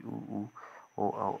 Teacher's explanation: वृत्तमुखी स्वर जिन स्वरों के उच्चारण में ओष्ठ वृत्तमुखी गोलाकार होते हैं उन्हें वृत्तमुखी स्वर कहते हैं